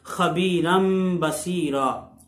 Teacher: خبیرن کی جو تنوین ہے اس کو میم سے بدل کے اقلاب کر کے غنے کے ساتھ پڑھیں گے